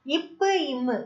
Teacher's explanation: மேல் இதழும் கீழ் இதழும் பொருந்துவதால பிறக்குது